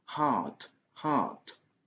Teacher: Donc, parce que en anglais américain, on prononce le son R, même partout. Mais en anglais britannique, le son R n'est pas prononcé tant qu'il n'y a pas une voyelle qui suit. Donc, si vous avez la lettre R dans un mot qui n'est pas suivi des voyelles, en anglais britannique, ce n'est pas prononcé.